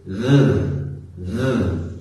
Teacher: So, the difference here is that when I use the voiced TH sound in English I have this vibrating sound in my mouth